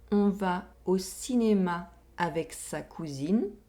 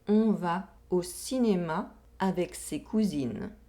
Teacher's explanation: We have the [a] sound in the first sentence, and the [e] sound in the second sentence. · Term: oral vowel sounds